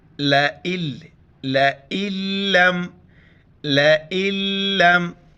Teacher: لام کے اوپر شد ہے تو اس وجہ سے ہم نون کو بالکل چھوڑ دیں گے. چھوٹی حمزہ ہے اس کو لام کے ساتھ ملائیں گے.